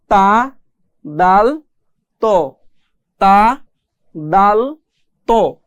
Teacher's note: জিহববার আগা সামনের উপরের দুই দাঁতের গোড়ার সঙ্গে লাগিয়ে পড়তে হয়